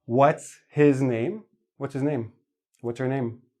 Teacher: H's are quite often dropped because H is a very soft sound. It gets lost in the flow of the speech.